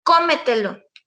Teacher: el acento en la anterior a la antepenúltima por ejemplo cómetelo el acento está en la primera o